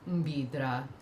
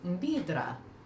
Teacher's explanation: our word for dragonfly would need to change from low tone mbidra to high tone mbidra